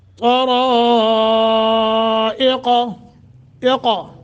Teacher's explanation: تا اور را کو موٹا بھی اور لمبا کرنا ہے، مد متصل ہے